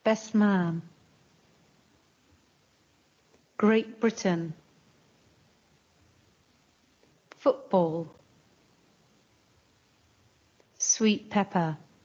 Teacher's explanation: T sounds more like P